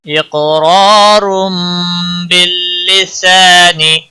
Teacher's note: قاف پر قلقلہ ہوگا، قاف موٹا بھی پڑھا جائے گا، حروف مستعلیہ میں سے بھی ہے۔